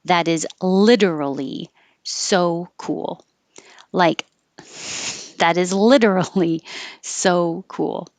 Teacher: If you're going to use literally in this kind of way, it's definitely exaggerated and stretched out, and the T changes to a D.